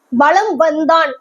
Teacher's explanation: இம்முக்கு அடுத்து வா அப்படின்ற வகர எழுத்து வரும்பொழுது தன்னுடைய மாத்திரை அளவுல இருந்து குறைஞ்சி 1/4 மாத்திரை அளவா ஒலிக்குது. எப்ப 1/4 மாத்திரை அளவா ஒலிக்கும், இம்முக்கு அடுத்து வா அப்படின்ற எழுத்து வந்ததுன்னா. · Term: மகர குறுக்கம்